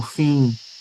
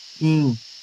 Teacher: Ele é produzido com um I nasal.